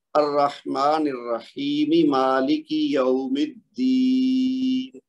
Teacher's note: نون کے نیچے جو زیر ہے وہ گر جائے گی اور یہ ہو جائے گا ساکن، تو پھر یہاں پہ مد عرض بن جائے گی. تو اس کو ہم 4 سے 5 حرکت تک کھینچ کے پڑھیں گے.